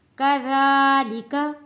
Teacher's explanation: ذال کو نرمی کے ساتھ ادا کریں گے اور ایک الف کے برابر کھینچ کر پڑھیں گے